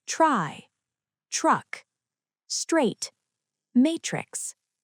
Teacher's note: The letter group TR is often pronounced as chur in American English. The T changes and blends into the R, creating an affricated sound. Chur, as in try, truck, straight, matrix. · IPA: /tʃr/